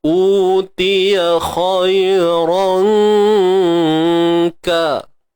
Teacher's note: Kan huruf kaf ni makhraj dia pangkal lidah. Pangkal lidah yang hampir dengan tengah lidah. Dia bukan macam huruf qaf.